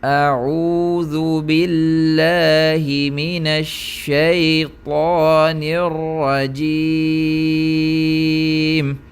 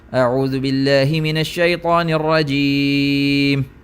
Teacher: جو میری 2 حرکات کی مقدار تھی وہ تحقیق کے اندر تھوڑی لمبی تھی، کیونکہ میری ایک حرکت ہی تھوڑی لمبی تھی، اور جو حدر ہے اس کے اندر میں نے تھوڑا جلدی میں پڑھا